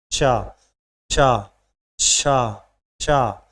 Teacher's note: उच्चारण करने में वायु मुख से रगड़ खाने के कारण गर्म हो जाती। जब भी आप इन्हें बोलेंगे तो गर्म मुख से सांस निकलेगी। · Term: ऊष्म व्यंजन